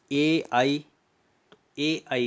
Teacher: ए आई का जो उच्चारण स्थान है वह है कंठ तालु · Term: कंठ तालव्य वर्ण